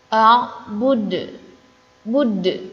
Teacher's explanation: Jika disukunkan ya atau berhenti, maka dibacanya memantul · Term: huruf qalqalah